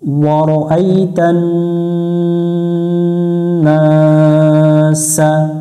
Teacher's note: নুনের উপর তাসদিদ, এই নুনে গুণনা করা ওয়াজিব।